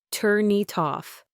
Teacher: A native speaker would almost certainly say it as turn it off. The N links to the it, and the T links to the off. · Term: linking consonants to vowels